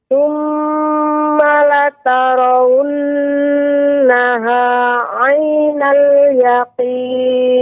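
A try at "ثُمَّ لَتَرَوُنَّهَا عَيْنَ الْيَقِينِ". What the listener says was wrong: Itu catatannya pada huruf ra.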